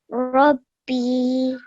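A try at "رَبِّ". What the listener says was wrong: Well done, exactly the same way. And I loved how you really pressed down on the bar, okay?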